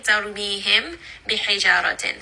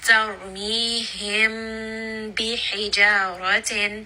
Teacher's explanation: then the mim sakin is going to be hidden between the lips. So you are hiding it. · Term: Khafi